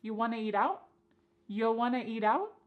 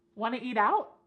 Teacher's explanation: we could cut off that first word y completely and just say want to eat out.